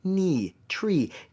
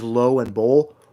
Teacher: the tongue is higher up in the mouth instead of being lower down like a bowl